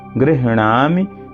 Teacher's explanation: यहाँ देखिए गृह आधा हा है और पूरा अणा है, तो अणा बड़ा है। गृह पहले हा का उच्चारण होगा, फिर नामि